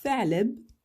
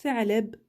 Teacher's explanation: On la prononce bien en sortant le bout de la langue au niveau des incisives de devant.